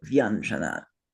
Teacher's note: So in Sanskrit even though it's v and anjama we can't write it that way it's a soundbased language so we have to change the way we write it to reflect the way it sounds to the Sanskrit ear. So the i in front of another vowel turns into a y and we say vanjana.